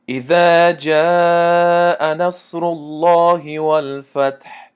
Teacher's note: لام لفظ الله یعنی اسم الله آمد برادر عزیز، ما اهمیت دادیم حرفی پیش از لام لفظ الله بودگی حرف را است. حرکت این حرف اهمیت دادیم که او است، یعنی پیش دارد، ضمه دارد، بنابراین لام لفظ الله قفل خوانده شد